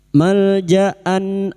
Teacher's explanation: bunyi fathah tanwin dibaca jelas tanpa mendengung